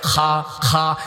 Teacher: যেখানে আলাজিব আছে, কাশ হয়, ওইখান থেকে খা উচ্চারণ হয়।